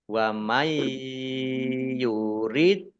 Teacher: dal sukun bacaan kolkolah, dibaca memantul, ditampakkan pantulannya